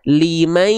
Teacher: Limai. Berubah suaranya, berarti ada yang masuk ke hidung. Melipir ke hidung. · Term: dengung